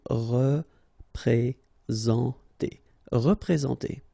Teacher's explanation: All right, remember that you get this N together, and then, well, it's a nasal, so it goes in your nose, and it's en.